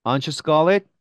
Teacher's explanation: 자, 부가음문은 올려 발음하면 실제 물어보는 것이 될 수 있겠지만 내려서 억양을 falling intonation을 하게 되면 확신을 가지고 얘기하는 거예요